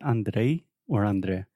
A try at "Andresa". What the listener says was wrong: Andresa. You don't have the I.